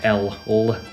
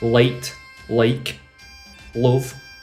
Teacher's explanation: forget about the L Sound it's always dark l